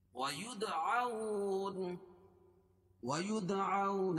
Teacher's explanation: عن ساق ويدعون، وید دار پر قلقلہ، عون واو ساکن سے پہلے زبر ہو تو واولین ہوتا ہے، اس کو نرم آواز کے ساتھ جلدی پڑھیں گے